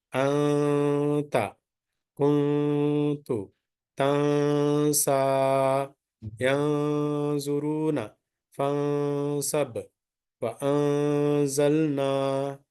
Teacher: So in whenever tanween nun sakin followed by one of the ikhfa letters, then noon sound of the tanween nun sakina must be here, must be suppressed, must be hide. You should not read the noon sound, just make the 2 units prolongation. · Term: ikhfa rule